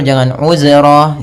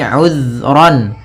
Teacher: hati-hati dalam pelafalan zal, usahakan di sini jangan sampai memantul, jangan uzra gitu ya, tapi uzran.